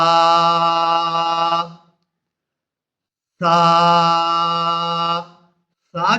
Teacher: زبان کی نوک کو جب اوپر والے دانتوں کی کنارے کے ساتھ لگائیں گے تو سا ادا ہوگی، وہاں سے سا ادا ہوگی۔